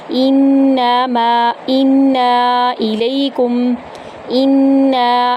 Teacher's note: حمزہ کو نون کے اندر داخل کریں گے اور غنہ کریں گے، نون غنہ کے ساتھ نون کو ہم 3 سے 5 الف کے برابر لمبا کریں گے۔ الیکم، الیکم میں بھی ہم نے غنہ کرتے ہوئے شد والے میم میں کاف کو داخل کرنا ہے اور موٹا نہیں کرنا ہے یہاں پر کاف کو۔